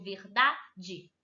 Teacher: verdade é considerada paroxítona, porque é a minha penúltima sílaba mais forte